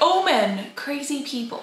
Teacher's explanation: So when it's like all men, the L just disappears.